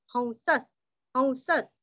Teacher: हंस, अभी यहाँ पे देखो ह के ऊपर आप हंस ऐसा भी होता है और आप औ के जैसा भी कर सकते हैं, हंस, और विसर्ग का उच्चारण आधा स